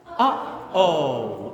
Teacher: uhoh where we have a little bit of a click